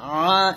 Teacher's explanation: এখানে আইনের এক লিপ টান দিবেন আর আইনটা চাপ দিয়ে বলবেন আ